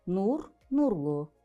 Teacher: nur sözündəki sait dodaqlanandır qalındır ona görə də artırdığımız şəkilçidə qalın və dodaqlanandır